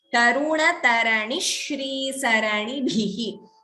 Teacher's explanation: So please note Taruna Tarani Shri, Dvitvam here. Between ni and shri, taranishri, extra sh is heard, so double sound dvitvam.